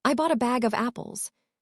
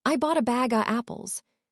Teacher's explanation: The of becomes the schwa sound.